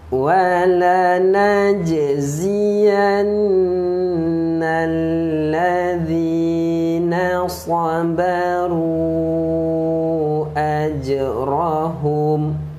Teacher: Jim adalah qalqalah syughra. Okey, jadi ada pantulan kecil di situ.